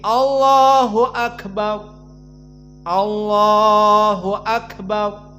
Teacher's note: Karena ro bukan dari hams. Maka siapa yang membaca ro dengan hams salah. Karena dia jahar. Tidak boleh dikeluarkan nafas menjadi roriru ar.